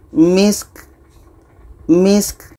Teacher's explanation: Sin dibaca, ka dibaca. Ka mati adalah berangin.